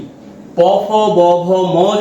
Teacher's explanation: আমাদের অধর এবং অষ্ঠ দুটো ঠোট এরা পরস্পর স্পর্শ করছে